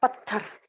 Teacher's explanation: त और थ को मिलाकर बोला गया पत्थर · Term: संयुक्त व्यंजन